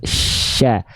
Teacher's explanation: Huruf shin itu makhrajnya dari tengah lidah yang diarahkan ke langit-langit, lalu dia punya sifat namanya tafashi, jadi menyebar udara dari mulut.